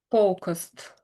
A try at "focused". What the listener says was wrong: Okay, so I think the O needs a little bit of extra emphasis when you're reading it or saying it out loud.